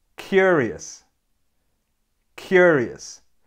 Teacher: this word has three syllables and the correct way to pronounce it is to have the stress on the first syllable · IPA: /ˈkjʊərɪəs/